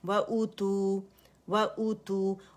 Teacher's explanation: و باریک ہے اور حمزہ اقص الحلق سے ادا کریں گے